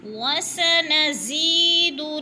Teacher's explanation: سین کو سٹی کی آواز سے وسا کی، وَسَنَزِيدُ زا کو سختی سے ادا کریں گے، اور زی یا ساکن سے پہلے زا کے نیچے زیر ہے تو یا مدہ ہو رہا ہے، کھینچ کے پڑھیں گے ایک الف کے برابر.